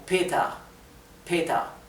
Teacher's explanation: casi es imperceptible como sonido de r suena más como una a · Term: la r final